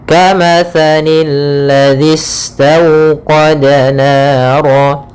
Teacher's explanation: Alif lam syamsiyah, yaitu alif lam yang ditulis tapi tidak dibaca alif lamnya sehingga langsung ke huruf lam yang ketiga, yaitu lam yang ditasydidkan. Maka di sini ada lam yang berharokat tasydid.